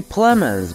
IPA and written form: ˈplɛmənz (Plemons)